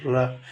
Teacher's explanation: இடையின ரகரம். நாவின் மேல் அன்னத்தில் மையப்பகுதியை உரசுவதால் தோன்றும் எழுத்து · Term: வல்லின ரகரம்